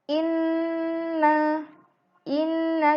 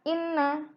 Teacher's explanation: resep huruf yang berharakat bertemu dengan Nun tasydid dan mim tasdid maka wajib dibaca dengan tempo hunah ditahan dua ketukan